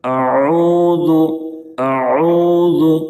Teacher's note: قل اعوذ، اعوذ حمزہ اور عین میں فرق کریں گے کیونکہ دونوں الگ الگ حروف ہیں، دونوں میں واضح فرق محسوس ہونا چاہیے۔ اعوذ، اعوذ واو ساکن سے پہلے پیش ہے، واو مدہ ہوگا، اس کو ایک الف کے برابر کھینچیں گے۔ ذال کی ادائیگی میں زا کی طرح سیٹی جیسی آواز نہیں نکلنی چاہیے۔